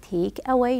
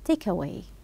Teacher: link between the particle and the verb link them together do not put aah in the middle